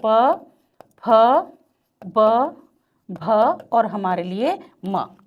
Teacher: तो अधरोष्ट जब एक दूसरे से मिल जाते हैं तो लेबियल या हमारे लिए प वर्ग ओष्ठय है